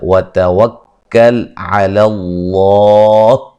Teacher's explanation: لفظ اللہ کو موٹا ادا کریں گے، اس سے پہلے حرف پر زبر ہے تو وقفاً بڑی مد کے ساتھ پڑھ سکتے ہیں.